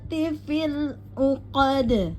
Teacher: waminyarrin naffasati fil uqad ya uqad ya qo kemudian sama dal langsung qod karena dal adalah sifatul huruf-huruf yang termasuk diqqalqalakan pada akhir ayat maka dibaca pantul dengan jelas yaitu pantul kubra ya saya ulang [Musik] naati fil uqad.